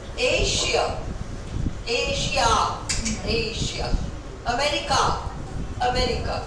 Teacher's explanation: most of the words जो एंड ए में खत्म होते हैं वो श्वा में खत्म होते हैं